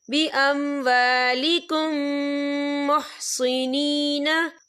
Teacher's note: हम पिछले मीम को अगले मीम में मदगम करेंगे और हम यहाँ गुन्ना भी करेंगे। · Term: इदगाम शफ़ी